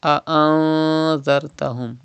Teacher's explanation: You can see dhal after noon sakin, and dhal is an ikhfa letter, so ikhfa will be done and gunna will be done in noon sakin.